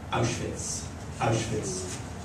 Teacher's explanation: The slide from the ow to that soft ch, W pronounced as the, and the final ch, difficult for Irish pupils.